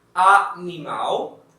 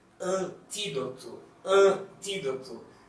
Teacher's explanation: it can be more opened, like animal, or like this one, more nasal, antídoto